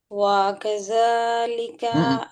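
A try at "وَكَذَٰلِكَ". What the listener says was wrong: হয়নি হয়নি হয়নি হয়নি। হ্যাঁ, কা কা কা, কা, না হ্যাঁ কাই, কিন্তু কাটাই কেমন চেপে পড়তেছিল সেই জন্য, যাই হোক। ওয়াকা আলিকা,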